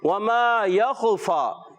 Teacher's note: وما میں ایک الف کھینچ کر ادا کریں گے، میم الف زبر ما · یخفا میں خا کی ادائیگی کلیئر رکھیں گے، کلکلا ادا نہیں کی